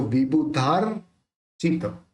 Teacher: अब यहाँ पे क्या है, ये रेफ है, तो रेफ को अपन धा के बाद में जोड़ के बोलेंगे